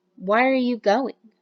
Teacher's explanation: So see how that has a falling intonation.